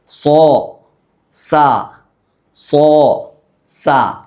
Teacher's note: സ്വാദ് പറയുന്ന സമയത്ത്, സീൻ നമ്മൾ പറയുന്ന സമയത്ത് എവിടെയാണോ നാവ് വെക്കാറുള്ളത് അവിടെ തന്നെയാണ് സ്വാദ് പറയുന്ന സമയത്തും നാവ് വെച്ച് ഉച്ചരിക്കേണ്ടത്. എന്നാൽ ഈ സ്വാദ് പറയുമ്പോൾ തഫ്ഹീമാക്കി ഘനപ്പിച്ച് ഉച്ചരിക്കണം.